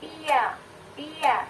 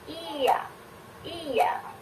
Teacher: Lidah yang asalnya di atas, i, itu lidahnya posisinya ada di atas, i, kemudian turun ke bunyi a. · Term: palatalisasi